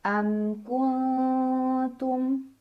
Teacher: Maka cara baca mim sukunnya dibaca secara jelas. Bunyinya masih bunyi asal dan tidak perlu kita tahan. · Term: idhar syafawi